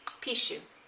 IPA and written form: piʃu (slime)